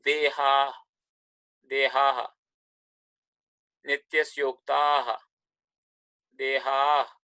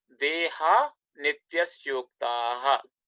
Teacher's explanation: The visarga simply goes away because nakara, as you see, it is a voiced consonant.